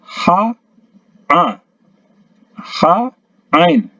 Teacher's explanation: ini pertengahan tenggorokan ada 2 macam, yaitu huruf ha sama huruf ain. Jadi kalau a sama ha dalam sekali tempatnya, paling dalam, naik sedikit ya, ha a, ha ain ya, naik sedikit dari yang tadi ya. · Jadi penyebutannya ha di tengah tenggorokan.